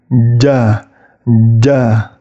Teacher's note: huruf Jim depan lidahnya itu naik mengenai langit-langit